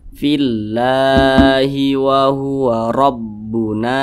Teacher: maka kalimat Allah ini dibaca panjang Mad Thobi'i panjangnya dua harakat atau kira-kira dua ketukan